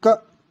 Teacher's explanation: इसमें अघोष जो कि का है, क्योंकि का अगर उच्चारण करेंगे तो क बहुत कम सांस का प्रयोग किया जाएगा और स्वर तंत्रियां इसमें झकृत नहीं होती हैं, तो इसलिए ये अघोष वर्ण है।